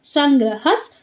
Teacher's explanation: ಹ ಮುಂದೆ ವಿಸರ್ಗ ಇದೆ ವಿಸರ್ಗದ ಮುಂದೆ ಸ ಇದೆ ಅರ್ಧ ಸ